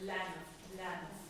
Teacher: You hardly pronounce the E in lanav. It's more, think of it as being part of the L. So lanav. It's there only in a tiny way.